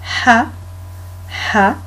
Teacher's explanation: on ouvre la bouche et le son il sort du fond de la gorge